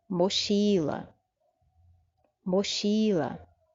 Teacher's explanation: Também a sílaba forte é a penúltima.